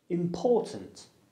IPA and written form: ɪmˈpɔːtənt (important)